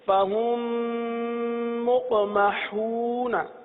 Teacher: اب فہم ملا کر ایک حرف پڑھا جا رہا، صحیح ہے نا، دو حرف نہیں پڑھے جا رہے، میم کو میم کے اندر ملا دیا۔ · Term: ادغام شفوی